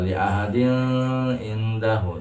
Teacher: Jangan dibaca li ahadin indahu, salah. Tanwin bertemu dengan ain, maka hukum bacaan ilmu tajwidnya adalah dibaca idhar, dibaca jelas.